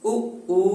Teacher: इन दोनों स्वरों का जब हम उच्चारण करते हैं तो उच्चारण में ओष्ठ का यानी होठों का सहयोग रहता है। उ उ, इस प्रकार होठों के सहयोग के कारण इन स्वरों को ओष्ठ स्वर कहा जाता है।